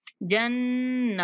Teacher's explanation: جب ہم نے جنہ پڑھنا ہے نا تو نون پر غنہ کرتے ہوئے اس کو کھینچنا ہے تھوڑا سا